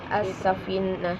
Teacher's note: Yang bagian alif lam syamsiah as-safinah, karena hukum bacaan alif lam bertemu dengan sin, maka cara bacanya harus dileburkan